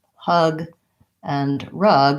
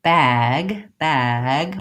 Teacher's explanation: hug and rug I want my tongue to be relaxed in my mouth vs. bag bag my jaw is more open bag and my tongue is more forward for the a vowel